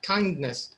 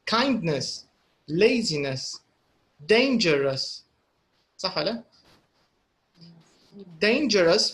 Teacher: the stress is on the first syllables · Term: syllable stress